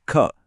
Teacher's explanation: ख बोलते वक्त हथेली पर हवा के एक तेज झोंके का साफ एहसास होगा। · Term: एस्पिरेटेड ख